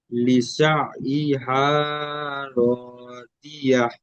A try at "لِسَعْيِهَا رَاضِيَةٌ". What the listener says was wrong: এখানে লিসা হা, বড় হা পড়তেন, বড় হা হবে না, ছোট হা হালকা ভাবে। লিসা হা, হা, হা। লিসা হা রাদিয়া। রাদিয়াহ। লিসা হা, হা ঠিক এমন গলাতে উচ্চারণ হবে না। লিসা হা রাদিয়া।